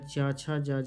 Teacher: च वर्ग का उच्चारण तालू से